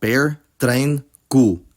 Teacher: Dutch does not aspirate voiceless plosives at the beginning of a word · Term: No aspiration